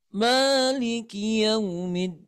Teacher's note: Awalnya kita ayun kemudian turun ya, rendah dulu. Diayun sambil direndahkan iramanya.